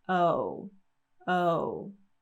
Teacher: we're going to get a little glide here at the end. So the lips are going to glide forward. O, O. Now, when you watch native speakers, if you watch them speak, you might not see them glide forward so much for the end of the O sound, but you can hear the glide.